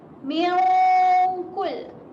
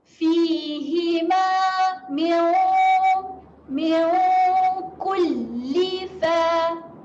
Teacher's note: Nun tidak bertanda berjumpa dengan huruf kaf. Jadi seolah-olah bacaan dengungnya kita tambah huruf NG.